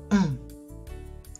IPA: ɔ̃